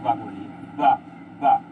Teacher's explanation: जो हमारी दांत हैं ऊपर वाले वो नीचे होंठ पे टच हो रहे हैं